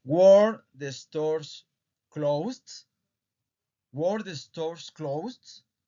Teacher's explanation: recuerden elevar la entonación aquí de la voz, ¿ok? Para que se sienta que es una pregunta.